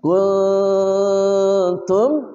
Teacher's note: nun mati bertemu ta ikhfa haqiqi samar dan dengung